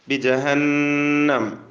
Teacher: നൂനിന് മുഷദ്ദദ അവിടെ മണിച്ചുകൊണ്ട് പറയണം.